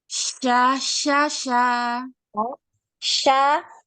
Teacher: jadi ngalir ya S enggak boleh putus suaranya